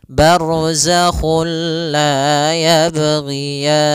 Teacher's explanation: juga sendiri itu idgham yang kita namakan juga idgam Kamil yaitu kita memasukkannya secara utuh secara seluruhan kepada huruf lam sehingga tidak menyisahkan sedikit daripada bunyi huruf nunnya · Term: idgham bilaguna